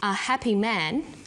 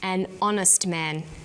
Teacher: The H is not pronounced, so honest sounds like it starts with a vowel.